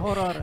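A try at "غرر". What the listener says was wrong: Goror ya, jangan horor ya.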